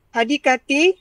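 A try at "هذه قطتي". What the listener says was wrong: Hadi Qa, bukan Ka. Hadi Qa.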